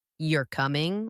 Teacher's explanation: if I say you're coming with a rising tone, it becomes a question. I am not sure.